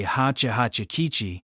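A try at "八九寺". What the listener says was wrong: You're forgetting a temple again. Is a temple disappearing every time you say my name?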